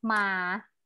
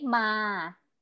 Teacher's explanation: ma in the low tone is ma is a flat sound